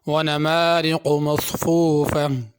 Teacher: نمارق کی را باریک ہوگی اور قاف پر ہوگا۔ مصفوفہ صاد ہے، مصفوفہ نہ پڑھا جائے۔